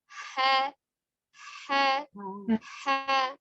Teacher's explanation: Ya, ini perbedaan dengan huruf jimnya. Sementara dari makhorijul hurufnya dia keluar dari al-halqi, tenggorokan bagian tengah. Ha, lebih lepas. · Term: huruf ha